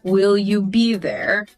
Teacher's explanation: Upward pitch on there. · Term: rising intonation